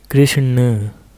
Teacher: जब आप कृष्ण का उच्चारण करेंगे तो आखिरी में जो ना आ रहा है इस ना को अपने जीभ और मूर्धा को स्पर्श कराते हुए किया जाएगा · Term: मूर्धन्य